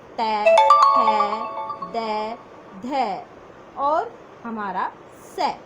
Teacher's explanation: मूल रूप से हमारे दांतों से ही उच्चारित होती हैं वो ध्वनियाँ दंत ध्वनियाँ कहलाती हैं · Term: दंत्य ध्वनियाँ